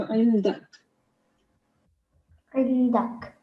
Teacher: when we do a waqf at the end, this fatha changes into a conditional sukoon.